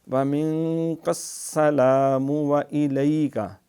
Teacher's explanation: یہاں پھر نون ساکن کے بعد کاف اخفا ہوگا